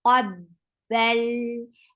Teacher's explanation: Qaf is heavy. Lift your tongue up from the root, and for Fatha, open your jaws and attach with Ba.